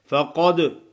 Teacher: قاف کو موٹا کرنا ہے, دال پہ قلقلہ ادا کرنا ہے